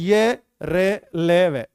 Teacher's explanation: स्वरतंत्रीय खूब कंपन कर रही है। अघोष नहीं है बेटा, सघोष।